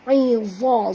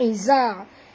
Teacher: Ini bukan huruf zai, ini huruf za, tebal. Huruf za termasuk huruf isti'la, huruf tebal ya.